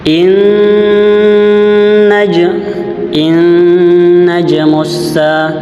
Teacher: dia nun bertasdid dengan harakat fathah dan dia harus ditekan. Contoh bacanya inaj in najmusa itu hukum bacaan ghunah.